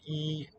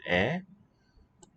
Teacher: instead of e it's a more open jaw position